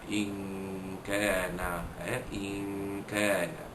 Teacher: menyembunyikan bunyi nun mati yang bertemu dengan huruf kaf ini beserta dengung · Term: ikhfa haqiqi